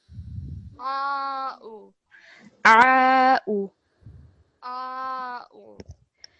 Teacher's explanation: they want you to make a difference between the ayn, which is from your throat, and the u, which is a very simple sound